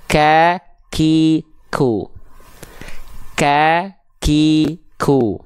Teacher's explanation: kalau Kaf ada percikan-percikan nafasnya · langit-langitnya agak tulang ada agak agak keras ada tulang langit-langitnya nah huruf Kaf itu disentuhkan di perbatasan pangkal lidahnya di perbatasan antara langit-langit yang paling dalam ini yang lunak dengan langit-langit yang keras